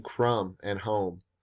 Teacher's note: the near rhyme between crumb and home there is the echo of the round vowel and the m sound